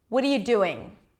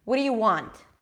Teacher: what are you and what do you sound exactly the same